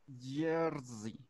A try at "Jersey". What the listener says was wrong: La R me la hiciste como que moviendo mucho tu lengua. Me dijiste como yer. Es como yer.